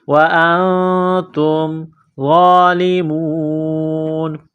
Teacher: وَأَنْتُمْ، حمزہ کو نون کے ساتھ ملانا ہے، نون ساکن کے بعد تا ہے، حروف اخفا ہے، غنہ کریں گے، آواز ناک میں چھپائیں گے